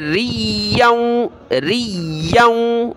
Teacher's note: या को सख्त करेंगे तशदीद की वजह से, और या को वाव के साथ मिलाते हो नाक में आवाज़ पैदा होगी।